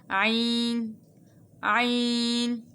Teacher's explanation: عین جو ہے یہ وسط حلق سے ادا ہوتی ہے، یعنی حلق کے درمیان والے حصے سے۔